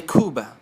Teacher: the B between vowels is soft not hard